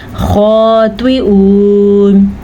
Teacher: ये हमज़ा है तो इधर आइन की आवाज़ निकलने ना पाए